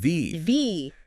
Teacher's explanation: How's the mouth position? Your top teeth, they gently touch your bottom lip. Okay, teeth on lip. And then you push air through, but you engage your vocal cords. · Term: voiced